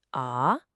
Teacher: The third tone dips down and then comes back up a bit.